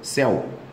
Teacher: Céu é ditongo aberto tônico decrescente.